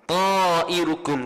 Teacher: Nah, mad wajib muttasil. Wajib kena baca 4 atau 5 harakat. Ta'irukum tu.